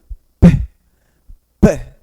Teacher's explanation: essa explosão de ar, onde você junta os lábios, bilabial, que a gente chama na língua portuguesa, e essa explosão provoca o som representado por este grafema.